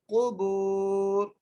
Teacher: قاف کو موٹا کر کے, با کو ایک الف کی مقدار کھینچ کے پڑھنا ہے